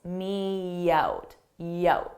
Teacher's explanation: I use a soft Y sound to combine two vowels me y so I add a y in front of out